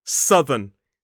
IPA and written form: ˈsʌðən (southern)